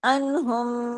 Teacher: آگے میم پہ تشدید ہے نا، تو وہ 2 میم ہے تو وہاں جا کے جڑی، انہم ادغام ہو گیا، یہ ادغام شفوی ہے، انہم ما کانو، یہ جو انہم جس طرح ہم نے نون پہ غنہ کیا تھا نا، کن، بالکل اسی طرح انہم میم بھی تشدید کے ساتھ ہے، بڑا غنہ ہوگا، اکمل غنہ ہوگا، ادغام ہوگا۔